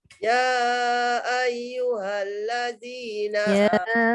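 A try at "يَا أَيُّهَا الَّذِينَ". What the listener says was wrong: Ya tu 4 harakat paling kurang pun.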